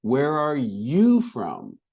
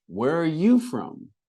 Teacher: And then we ask them, where are you from? And we do we have an emphasis on you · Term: returning a question